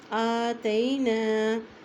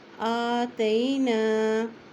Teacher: الف کے اوپر کھڑی زبر ہے اس لیے اس کو ایک حرکت لمبا پڑھیں گے